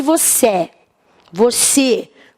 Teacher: esse e faz som fechado então eu uso acento circunflexo